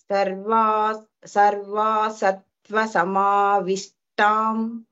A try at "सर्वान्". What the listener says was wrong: Sarva, after Sarva, Na is there, no? Sarvan Sattva Samavishtan.